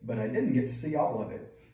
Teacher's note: quando T é entre dois consoantes, ele simplesmente vai sumir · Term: drop T